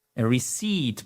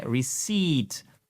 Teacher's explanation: C'est surtout pas la récepte, ok? Receipt, on prononce bien les voyelles, on met l'accent tonique au bon endroit et on ne prononce pas le P.